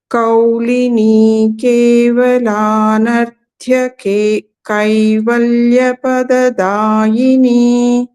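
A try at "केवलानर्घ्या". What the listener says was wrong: This is Kevala Narghya. It is Gha.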